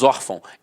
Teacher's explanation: Nós falamos órfão, então a sílaba tônica está na penúltima e é acentuada.